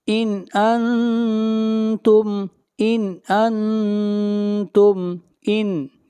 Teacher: من شیء ان انتم، ان انتم، ان، یہاں پر اظہار ہو رہا ہے اس لیے کہ نون ساکن کے بعد حروف حلقی میں سے حمزہ ہے